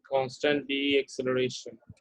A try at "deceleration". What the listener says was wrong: deceleration. You say deceleration, not deacceleration.